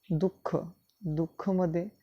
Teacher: दुःखमध्ये जेव्हा दूचा उच्चार करतो आहे तर थोडासा हळूपणे ह या वर्णाचा सुद्धा उच्चार होताना दिसतो आहे · विसर्गामध्ये आम्ही पाहतोय की ह या वर्णाला झटका देऊन उच्च श्वास सोडल्या गेल्यासारखा होतो आहे